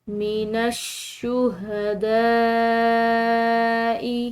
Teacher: بڑی مد کو کھنچاؤ سے پڑھا جاتا ہے، لمبا ادا کیا جاتا ہے